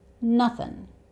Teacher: It's quite common to change the 'ing' sound to the 'uhn' sound. So it's the schwa sound and then the 'n' sound. 'Uhn' 'Doin'' And remember, the schwa sound is never stressed.